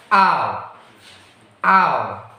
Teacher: Next is the combination of the vowel a and the u sound